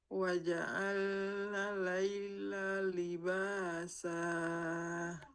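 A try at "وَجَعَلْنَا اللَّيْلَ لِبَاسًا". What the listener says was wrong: Tasdidnya di lam. Jadi huruf bertasdid itu ada betul, ada tasdidnya ya. Waja'alnal laila. Nah, jangan waja'alna laila. Tasdidnya hilang jadinya ya. Nah, waja'alnal laila libasa.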